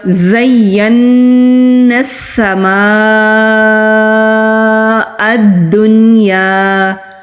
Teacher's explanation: زین السماء الدنیا، زا ہے یہ، زال نہیں ہے۔ جب ہم زا کو ادا کرتے ہیں ہمارے دانت آپس میں ملیں گے